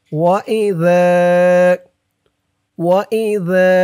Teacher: জালের উচ্চারণটা নরম হবে, জিহ্বার মাথা উপরের দাঁতের মাথার সাথে লাগবে জালের উচ্চারণটা করার সময়